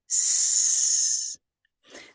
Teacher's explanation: The S sound, S, is a voiceless sound. You can hear the air escaping like a hiss.